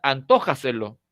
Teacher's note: La posición, o sea, la sílaba tónica sigue siendo la misma, to